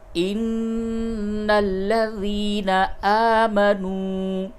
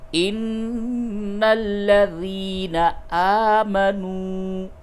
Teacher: نون پہ غنہ کیجئے، یا مدہ کو تھوڑا سا کھینچیے، اور یہ واو مدہ ہے، اس کو بھی تھوڑا سا کھینچیے